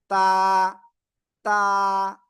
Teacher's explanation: জিব্বা রাগা, এই যে দুই দাঁত, দুই দাঁতের গোড়ায় লাগাবো, লাগিয়ে আমরা উচ্চারণ করব এক আলিফটা নিয়া